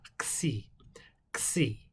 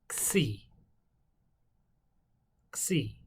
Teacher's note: a Xi in Greek is like a K, a K, and then you add a little more air from the back over the back of your tongue, and then finish it out with a S sound